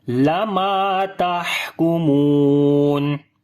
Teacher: On the ha we make hams quality. We continue our breath.